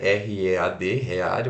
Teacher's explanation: se pronuncia o r puxado e longo